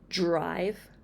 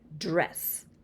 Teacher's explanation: The ch and j are the 2 affricates. So when we have blends such as tr and dr, they sound more like the 2 affricates. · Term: affrication